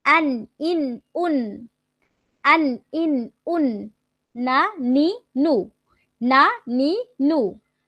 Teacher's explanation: জিহ্বার আগা তার বরাবর উপরে তালুর সঙ্গে লাগিয়ে উচ্চারিত হয়।